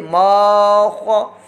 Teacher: میم الف زبر ما، یہ الف مدہ ہے، اس کو لمبا کریں گے، ما، خو زبر خو، یہاں پر خو پر کھڑی حرکت ہے، کھڑی معذرت زبر ہے، حرکت ہے، اور خو کو حروف مستعلیہ میں سے پر موٹا ادا کرنا ہے، حلقے اوپر والے حصے سے اس کی آواز نکلتی ہے، ما خو۔